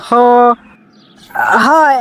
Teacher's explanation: দুই নম্বর মাখরাজ কণ্ঠনালীর মাঝখান হইতে উচ্চারিত হয় · এক নম্বর মাখরাজ কন্ঠনালী শুরু হইতে উচ্চারিত হয়